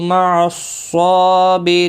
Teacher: واللہ دیکھیں یہاں پر پیش ہے، اور اب یہاں پر زبر اور یہاں پر زیر، اللہ کے لام کے پچھلے حرف کے نیچے یہاں پر دیکھیں زبر، تو اللہ کا لام پر پڑا جائے گا، اس کے اوپر کھڑی زبر بھی ہے، ایک الف کے برابر کھینچ کر پڑھیں گے۔ مع صاد مستعلیہ ہے، پر پڑا جائے گا